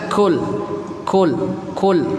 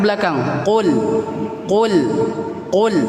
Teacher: Lidah paling belakang yang terkena langit-langit yang belakang juga yang lunak. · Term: huruf qaf